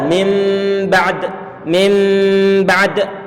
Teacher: Ada yang mengatakan berdasarkan sebagai riwayat-riwayat yang sahih, sebagaimana tadi itu yang telah kita praktekkan dengan cara kita tempelkan kedua bibir di saat mengucapkan mim ba'du. Didengungkan, ditahan suara dengungannya dengan cara menempelkan kedua bibir kita. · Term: bacaan iqlab